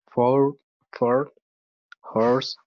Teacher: As we have double dot here, we can see that this sound is deep. So it's long, it's closed, and deep O sound, okay? And it's rounded, so we need to kind of make the mouth like round, like O.